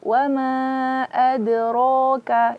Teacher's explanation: Huruf kaf itu jangan sampai mengeluarkan k, adrok. Mengeluarkan suara itu bukan sifat daripada huruf kaf. Huruf kaf yang dikeluarkan adalah nafasnya saja. Jadi, wa ma adraka, jangan ka.